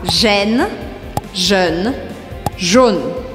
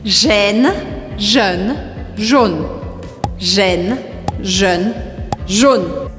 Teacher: você pode perceber que gêne é o mais aberto. Jeune, mais ou menos. Jaune, mais fechado.